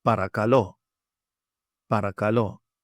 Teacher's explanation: notice the stress on this word. It is at the omega on the end. Put a little emphasis on that spot.